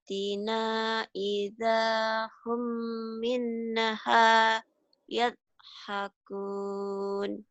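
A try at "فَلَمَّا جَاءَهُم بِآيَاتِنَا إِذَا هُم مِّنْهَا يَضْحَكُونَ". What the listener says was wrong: Ya pintar.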